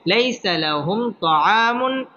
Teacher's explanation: আলিফ টেনে পড়তে হবে লাইসা লাহুম তাআমুন এটা হচ্ছে ইজহার কারণ তানবিনের বামে হামজা আসছে হামজা ইজহারের হরফ এখানে গুন্নাহ ছাড়া স্পষ্ট করে পড়তে হবে